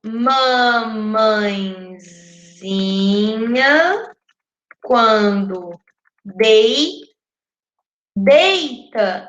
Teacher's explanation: quando deita, a sílaba tônica é dei. Então, ela não vai, a quem não vai contar vai ser o tá, que é a última sílaba e ela é átona.